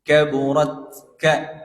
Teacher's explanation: Karena memang huruf tak yang disukun itu sifatnya syiddah. Dia memberikan suara tertahan. Jadi kaburat ka gitu.